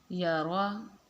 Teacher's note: را کے اوپر زبر ہے تو را کو ہم پر کر کے پڑھیں گے